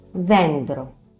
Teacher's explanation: Something remarkable here is that it's not pronounced as D, it's th.